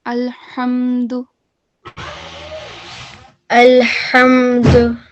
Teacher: So the letter ha is a throat letter. Okay. Huruf halki. It comes from the middle of the throat.